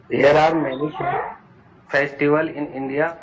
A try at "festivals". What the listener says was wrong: फेस्टिवल्स, इसका ध्यान रखो लास्ट में।